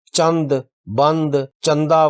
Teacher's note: چند، بند، چندہ وغیرہ میں نون کی آواز ظاہر نہیں ہے